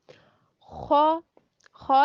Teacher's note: जब आप खौ करेंगी ना अदा, तो आपकी जो ज़ुबान है ना, ज़ुबान की जो लास्ट पे जड़ है वो तालू, ऊपर तालू के साथ लगेगी। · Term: खराटे वाला खौ